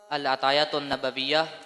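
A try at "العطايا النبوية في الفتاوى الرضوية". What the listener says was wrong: अल अतायन असल ता नहीं है, तानिस वाली।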